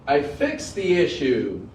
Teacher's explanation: check out how the voice Fades off on the ending there